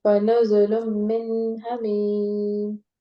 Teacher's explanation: اس کو یہاں ہم نہ اخفا کریں گے نہ غنہ کریں گے، اس کو نون کو ظاہر کریں گے